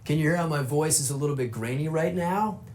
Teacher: California accents in general are famous for vocal fry, which is the sound your voice makes when you kind of let it sit in your throat